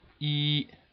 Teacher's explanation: the first tone is constant high from five to five and is pronounced uh in the number one